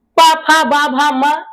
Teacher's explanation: यह ओष्ठ वर्ण है। प फ ब भ म जब भी आप बोलोगे यह दोनों ओठ एक दूसरे से सटेंगे टच होगा। इसीलिए अगर तुम चाहो अपने दोनों ओठों को ऐसे पकड़ के ऊपर तानो और एक नीचे तानो तो बोलो प बोलो नहीं बोल पाओगे।